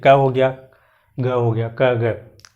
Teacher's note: अल्प प्राण वाले जो वर्ड हैं, जो लेटर्स हैं, उनको आप जब बोलेंगे तो इसमें आपको जो है आपके मुख से जो वायु निकलती है वो थोड़ी कम निकलती है अल्प प्राण में